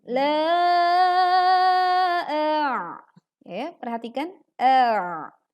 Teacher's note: menekan huruf ain dalam kondisi sukun pita suara kita menyempit sehingga suara terdengar lebih berat